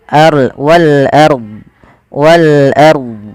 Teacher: Ro tafkhim yaitu rnya dibaca dengan tebal